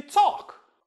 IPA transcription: tsɑ:k